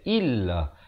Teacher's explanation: Ramai yang baca illa, yang betulnya illa. Hamzah baris bawah bunyi i, bukan bunyi e.